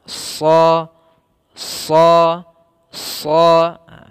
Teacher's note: Itbaq dan isti'la. Maka cara melafalkan huruf shad yaitu pangkal lidah kita terangkat sehingga suaranya menebal